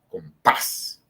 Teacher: termina en S, y la fuerza está en esa última sílaba